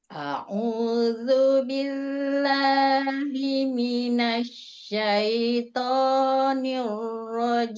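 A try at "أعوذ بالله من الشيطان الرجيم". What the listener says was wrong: Ya, turun satu lagi. Rajim. Nah, turun.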